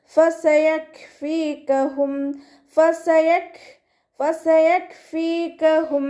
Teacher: കാഫിന് സുക്കൂനാവുമ്പോൾ കുറച്ച് air pass ചെയ്യണ sound കൊടുക്കുക